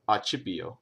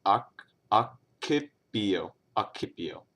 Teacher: In Church Latin, the double C would have made a CH sound, so accipio, right?